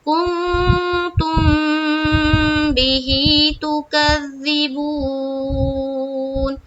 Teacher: میم ساکن کے بعد با آئے تو وہاں پر اخفاء شفوی کا قاعدہ بنتا ہے, یعنی کہ ہمیں اخفا کرنا ہے غنہ کے ساتھ